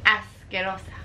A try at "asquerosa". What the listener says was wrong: Mm-hmm.